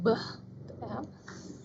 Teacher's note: yang bergetar pita suaranya adalah ketika kita menyuarakan bunyi Bah